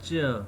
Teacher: when we produce j sound, there is vibration in our glottis, in our back of throat.